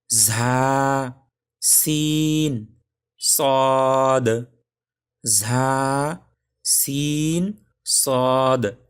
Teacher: জিহ্বার আগা সামনের নিচের 2 দাঁতের গোড়ার সাথে লাগায়া 3টি অক্ষর উচ্চারণ হয়